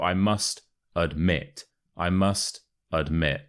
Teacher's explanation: a becomes a uh so it's not admit it's admit and the stress is on the second syllable